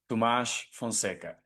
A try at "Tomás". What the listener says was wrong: But a little less H on the Tomás. Tomás.